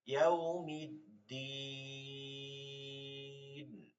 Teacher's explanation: মাদের হরফ বামের হরফে অক্ফ হওয়ার কারণে তিন আলিফ টেনে পড়তে হবে